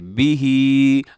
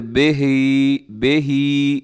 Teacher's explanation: کھڑی زیر کی وجہ سے لمبا کیا ہے